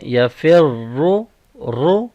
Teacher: را کے اوپر ضمہ ہے، اس کو بولڈ پڑھ رہے ہیں